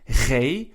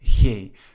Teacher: So in the Netherlands it will be something like G, and in Belgium it will be something like G. So as you can see, in the Netherlands there's a little bit more torque on that G. In Belgium it's a little bit softer.